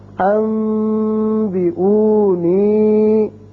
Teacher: نون ساکن کی مثال ایک کلمے میں، جیسے یہ نون ساکن ہے بعد میں با آ رہا ہے، تو اس کو جب ہم پڑھیں گے تو اس اخلاق یعنی ابدال کی وجہ سے یہاں غننے کسی آواز پیدا ہوگی اور وہی ایک الف کے برابر یعنی دو حرکات کے برابر آواز ناک کے بانسے میں ٹھہرے گی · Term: اقلاب